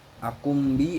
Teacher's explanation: Akumbi adalah iklab sebab nun sukun bertemu huruf ba, ketika dibaca huruf nun berganti menjadi mim